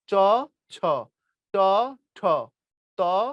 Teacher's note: দ্বিতীয় এবং চতুর্থ বর্ণে বাতাস বেশি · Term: মহাপ্রাণ